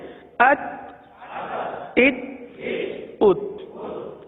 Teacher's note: حرف تا میں قلقلہ نہیں ہوگا، آواز کو جما کر پڑھیں